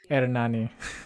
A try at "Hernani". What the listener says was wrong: You got to roll it. Yeah, there you go.